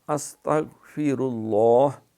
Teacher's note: غین پہ قلقلہ نہیں کرنا، سین پہ سیٹی ہے ، فیر اللہ، را بھی پر ہے، لفظ اللہ کا نام